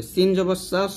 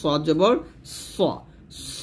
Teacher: সদ উচ্চারণ করতে গিয়ে যেন আবার সিনের মতো না হওয়া যায়, সিন হচ্ছে পাতলা হরফ এখানে পাতলা করবেন, আর সদ হচ্ছে মোটা হরফ এখানে মোটা করবেন